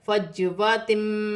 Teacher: کی مقدار کھینچ کر پڑھا جائے گا، فجواتم، جیم ساکن ہے، جیم حرف قلقلہ میں سے ہے، قلقلہ کے ساتھ ادا کیا جائے گا